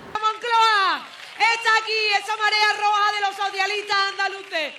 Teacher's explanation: En unos casos, esa S final se aspira y en otros se pierde.